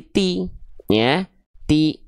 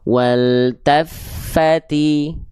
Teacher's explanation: Jelas betul-betul vokal i tidak condong cenderung miring ke vokal e ya.